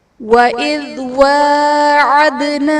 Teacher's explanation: دال حرف قلقلہ ساکن ہے تو یہاں پر قلقلہ خوب ظاہر کریں گے